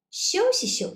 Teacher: the first phrase, we say it in a stronger way, and also we say it in a longer way. The second phrase, it's lighter and also it's shorter. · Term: lighter tone